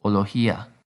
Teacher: it's a little hard to say a hard g especially when we're talking fast so this becomes more like an h sound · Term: softer g sound